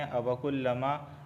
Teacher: اچھا، أَوَكُلَّمَا عَاهَدُوا، یہاں پر دیکھیں أَوَكُلَّمَا الف سے پہلے زبر آیا ہے، اس وجہ سے میں ما کو ایک الف کے برابر کھینچ رہا ہوں